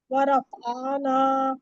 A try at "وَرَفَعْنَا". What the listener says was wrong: ورفعنا کو کھینچیے مت ورفعنا ورفع رفع فع فع